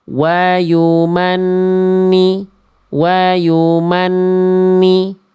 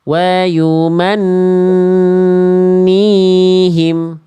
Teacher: Ditahan dulu, baru keluar vokal i. An-nya tahan dulu, tahan lebih lama. An-nya baru keluar vokal i. N 2 harokat. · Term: nun tasdid